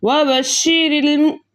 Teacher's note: हम लाम साकिन को ज़ेर वाले रॉ के साथ मिलाकर पढ़ेंगे। इसके अलावा रॉ के नीचे ज़ेर होने की वजह से हम इस रॉ को बारीक पढ़ेंगे